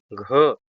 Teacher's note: घ सघोष महाप्राण है।